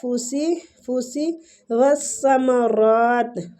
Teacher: نون کو چھپائیں گے، فوسی والثمرات، سا نرمی کے ساتھ اور را کو پور بھی پڑھیں گے اور اس کو کھینچیں گے بھی